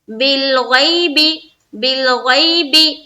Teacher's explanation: یا لین کا قاعدہ ہے، جلدی پڑھیں گے، نرمی اختیار رکھنا ہے